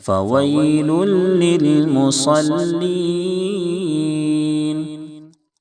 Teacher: لام کے اوپر دو پیش کی تنوین ہے، اس کے بعد حروف یرملون کے 6 حرفوں میں سے لام ہے، اس لیے ادغام تام ہوگا، تنوین کو لام سے ملائیں گے اور غنہ بالکل نہیں کریں گے، بلکہ لام کو ایک پیش دے کر کے دوسرے لام سے ملا دیں گے۔